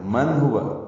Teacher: من ہوا نون ساکن کے بعد ہا آنے کی وجہ سے اظہار ہے، اظہار حلقی